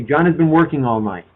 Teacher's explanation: These words, has and been and the ing at the end, these are function words, and we don't stress them.